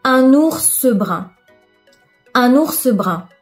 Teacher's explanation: on ajoute ce e virtuel pour nous aider à prononcer trois consonnes à la suite